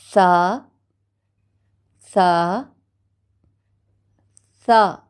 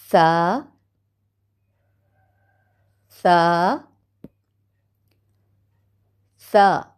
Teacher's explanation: ज़बान की नोक सामने के ऊपर के दांतों के अंदरूनी किनारे से लग रही है और जब आप इसके ऊपर के दांतों के अंदरूनी किनारे से लगाते हैं तो आवाज़ में नरमी है और बारीक भी आवाज़ है।